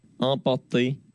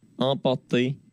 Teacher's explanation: Le R de port, il est presque pas présent du tout. Moi, je l'entends très très peu.